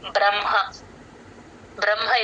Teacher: బ్రహ్మ ఎప్పుడు వచ్చినా సరే మా కింద ఫస్ట్ మ చెప్పి తర్వాత హ చెప్తాం